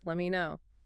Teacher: Standard reduction. The T in let drops before the M, and me reduces